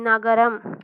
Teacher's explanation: மேல்வாய் பல்லினுடைய அடிப்பகுதியை தொடுவதால் நகரம் பிறக்கிறது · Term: தன்னகரம்